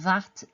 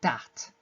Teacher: that would be a change from a voice dental fricative to a voiced alveolar plosive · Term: th stopping, TH stopping